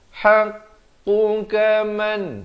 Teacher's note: qaf makhrajnya di pangkal lidah